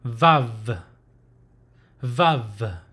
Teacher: the sound should come from the lower uh lip with the top teeth